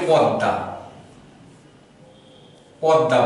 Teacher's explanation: এই দয়ের সাথে কিন্তু ম আছে, এই ময়ের উচ্চারণ কিন্তু আমরা করি না, পদ্মা বলি না, কিন্তু আমরা বলি পদ্মা, পদ্মা বলি।